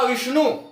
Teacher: सबसे अधिक जोर हम वी पर दे रहे हैं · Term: स्वराघात